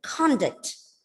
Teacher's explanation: The first syllable is stressed as it is a noun.